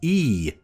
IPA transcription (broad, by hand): iː